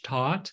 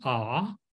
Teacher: Where's your tongue in that case with the vowel ah, right? Your mouth has to be open, ah, and it's toward the back. So it's all the way in the back.